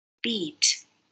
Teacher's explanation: for the word beat, there's no air going through the nose.